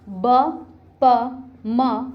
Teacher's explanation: ओष्ठ वर्ण है मतलब होठों का यूज किया जाता है